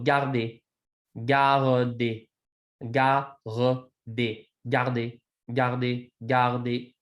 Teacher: a vowel, an R, and a D, which is a voiced sound. And in many of these kinds of situations, that R is going to now become very soft.